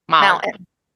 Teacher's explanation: You put the T in the back of your throat and no one has to know about it anymore.